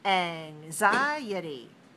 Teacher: use it as a noun notice how the syllable stress changes we have more syllables four of them and we have to stress the second one